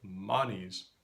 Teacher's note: So in a word like manis, the first vowel is ah, pronounced in the back of the mouth. The second vowel is E, pronounced in the front of the mouth.